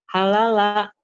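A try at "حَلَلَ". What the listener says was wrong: Halala. Nggak ada yang panjang. Halala.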